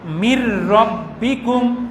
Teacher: কোরআনে এক্ষেত্রে তাসদীদ দেওয়াই থাকে, যেমন মির রব্বিকুম, এই যে নুন সাকিনের পরে র আসার কারণে রয়ে তাসদীদ দিয়ে মিলিয়ে পড়লাম, তবে গুন্না ছাড়া